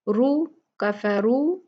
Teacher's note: जिस रा पे दम्मा और फतहा होता है वो मोटी मुफख्खम भारी पड़ी जाती है, पुर पड़ी जाती है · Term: रा मुफख्खमा